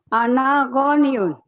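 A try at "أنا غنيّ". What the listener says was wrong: Gonya pendek. Goniyun. Salah nanti. Kalau panjang pendek salah, fatal ya bahasa Arab.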